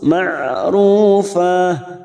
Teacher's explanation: Ain sukun memiliki sifat tawasud, ma'rufa. Ru duma bertemu sukun 2 harokat, fa ada fathatain yang dibaca waqaf selain tak marbutah, namanya mad iwad, cabang dari mad tabi'i.